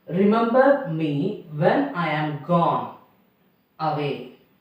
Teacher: The form is unstressed syllable followed by stressed syllable. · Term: iambic